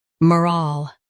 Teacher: Stress ral and keep soft.